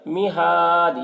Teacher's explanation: یہاں پر وقف کریں گے تو دال میں قلقلہ ہوگا